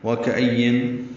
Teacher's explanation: واو ہونٹوں کی نا تمام گلائی سے ادا کریں گے، کاف باریک ہے، حمزہ کو یا سے ملانا ہے، یا کو نون سے ملانا ہے، لیکن آگے میم آ رہا ہے تو یا کو میم سے ملائیں گے۔